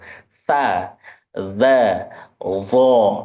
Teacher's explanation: Makhraj terakhir di ujung lidah ini atau ke-10 yaitu tsa, dza dan d yaitu ujung lidah bertemu dengan ujung gigi seri bagian atas